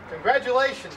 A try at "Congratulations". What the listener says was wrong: You see, it's a G. Congratulations. It's a G. It's not a T or a D. It's a G. C-O-N-G-adulations. Whatever it's spelled.